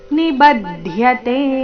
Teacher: ನಿಬದ್ಧತೆ ನಲ್ಲಿ ಬ ಮೇಲೆ ಆಘಾತ